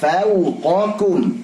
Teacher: Di fau jangan masuk hidung. Qa tebalkan, kum tipiskan.